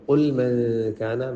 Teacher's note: من یہاں پہ غنہ کریں، اخفا ہے